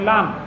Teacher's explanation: জিব্বার আগার কিনারা উপরের এক পাশের দাঁতের গোড়ার সঙ্গে লেগে